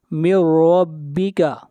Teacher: ادغام بلا غنہ کریں گے اور را کو موٹا پڑھیں گے